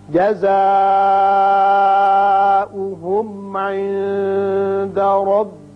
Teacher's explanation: جزاؤہم یہاں مد متصل ہے، 5 حرکات کھینچیے · عند نون ساکن کے بعد حروف اخفا میں سے دال ہے، یا اخفا کریں گے